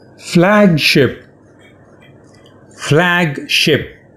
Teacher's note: It's an open front vowel sound. Ah, like in cat.